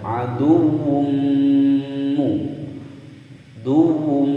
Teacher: Adumu ada dhammatain bertemu dengan mim. Huruf mim salah satu huruf idgham bi gunnah, maka cara membacanya langsung dimasukkan dan didengungkan selama dua ketukan. Adumu, dumu, ya, ditekan selama dua ketukan.